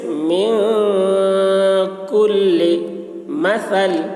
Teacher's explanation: نون ساکن میں اخفا یعنی نون کی آواز کو ناک میں لے جا کر چھپائیں گے